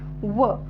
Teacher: व चा उच्चार करत असतानी ओठांचा दाताला स्पर्श होत आहे म्हणजेच दातांचा ओठांना स्पर्श होऊन हवा तोंडावाट्य बाहेर फेकली जात आहे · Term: दंतोष्ठ